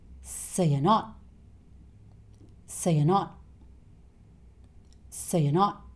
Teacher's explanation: the t sound isn't really said here. He stops himself just before he makes the t sound. So this whole thing becomes, so you're not, so you're not, so you're not. · both of these words are said very quickly. And they both have the schwa sound, so they're not stressed.